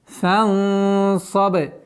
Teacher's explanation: И ба у нас мягкий звук, но с правилом калкаля.